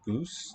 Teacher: We say goose, the nasal's gone